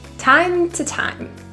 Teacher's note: The word to is reduced to a quick little t.